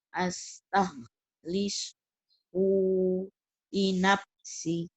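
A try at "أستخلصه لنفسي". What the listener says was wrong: Si-nya panjang. Astaghlishu linafsi.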